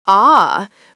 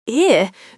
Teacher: A wide open mouth for ah versus a slightly closed mouth for I dramatically changes the resonance.